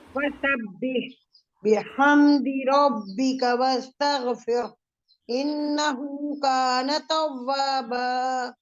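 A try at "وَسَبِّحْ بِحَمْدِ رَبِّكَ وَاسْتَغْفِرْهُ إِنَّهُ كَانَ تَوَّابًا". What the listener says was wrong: ٹھیک ہے الٹا پیش نہیں سنائی دے رہا ہے, ہم ایک بار پڑھ کر سنا دیتے ہیں کیا ہے الٹا پیش کی کہانی اور کیا اس کی ادائیگی, شاید اس سے آپ لوگ اندازہ لگا پائیں.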